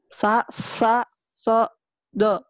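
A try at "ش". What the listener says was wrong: Di sini kurang nih. Sa sha so do. Sa sha. Ya, ini sha-nya Sa sha so do.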